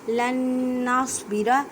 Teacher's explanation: لن نصبر، اب دیکھیں نون ساکن ہے، نون ساکن کے بعد نون ہے، ادغام مع گنہ، مینس کہ گنہ کرنا ہے۔ گنہ کا مطلب ہوتا ہے آواز کو ناک میں لے جانا ایک الف کی مقدار میں۔ ایک الف کا مقدار کا اندازہ ایک انگلی کھولنے یا بند کرنے میں جتنا ٹائم لگتا ہے اتنا۔